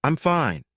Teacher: But with a flat tone, it sounds serious, maybe even a little unfriendly. But if you add a little rise and fall, I'm fine.